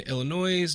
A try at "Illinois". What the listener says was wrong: Illinois. The S is silent.